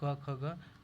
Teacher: जिन वर्णों के उच्चारण में जीवा के मूल का स्पर्श होता है उन्हें क्या कहते हैं? जीवा मूल्य कहते हैं।